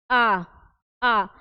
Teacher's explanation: विवृत स्वर उसमें क्या आता है बोल के देखिए आ आ आ बोलते समय हमारे मुंह की जो स्थिति है वोह क्या है पूरा ओपन है